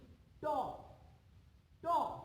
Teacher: তালু। তালুর ঠিক উপরের অংশটা, যেখান থেকে উচ্চারণ করতে হলে আমাদের জিহ্বাটাকে সামান্য উল্টাতে হয়। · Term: মূর্ধা